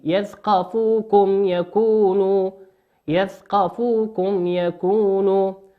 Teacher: الميم في كلمة يثقفوكم هي ميم ساكنة أتى بعدها حرف الياء، والياء من حروف الإظهار، تظهر كما هي